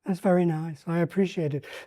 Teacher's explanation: sometimes he goes into this high, slightly breathy, gentle way of speaking. Um, it it certainly makes a contrast with the sometimes more belligerent way of talking.